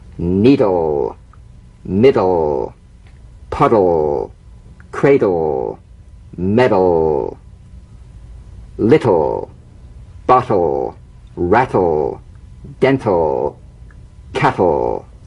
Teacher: Bounce the D or T drum beat off the gum ridge and return there immediately for the L. Feel the typical drum beat damped in the tip of the tongue as the D or T click slides quickly into the L.